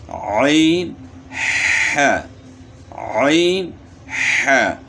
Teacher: وسط حلق یعنی گلے کے درمیان، یہاں سے 2 حروف ادا ہوتے ہیں